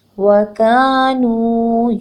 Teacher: کاف زبر الف کا دو حرکت لمبا کرنا ہے